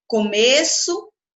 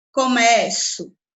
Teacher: uma vai ter a vogal fechada, com som fechado, e a outra a vogal com som aberto